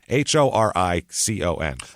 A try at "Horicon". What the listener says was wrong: Oh, you don't pronounce the H. It's just O'Riken.